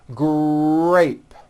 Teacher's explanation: the R sound is stronger and you even hear it more than the G sound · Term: R blends